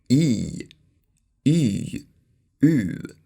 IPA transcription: ʉː